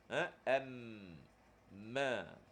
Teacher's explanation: Huruf mim pun senang. Dua bibir yang dirapatkan juga. Cuma ada suara yang keluar melalui hidung. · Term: sifat gunnah